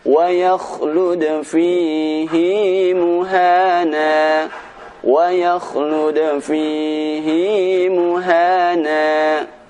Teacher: ada satu kata fihi di dalam Al-Quran ini yang mana bacaan hi harus dibaca panjang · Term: bacaan fihi